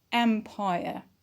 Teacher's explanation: and empire empire is a noun so it is rest and we put the stress on the first syllable which is am empire